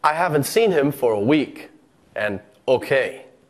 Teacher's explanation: With the falling intonation, we're indicating that we're finished speaking. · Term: rise-fall